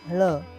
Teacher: मूर्धन्य वर्ण उच्चार करताना जिभेचा शेंडा वर वळून टाळूच्या मधल्या भागाला म्हणजेच मूर्ध्याला स्पर्श करतो